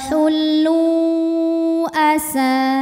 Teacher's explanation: maka lam yang berharakat damah kita panjangkan boleh empat boleh lima harakat wullu Asa sa hukumnya adalah Mad thobii zohiri sebab ada Alif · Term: Mad Jaiz munfasil